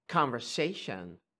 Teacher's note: And the way you say it is with se, not ze. Se, not ze.